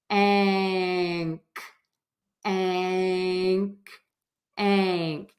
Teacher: Just shift the air out of your nose. And then keep the mouth in the same spot and the air will puff out for the K. Ank, ank, ank.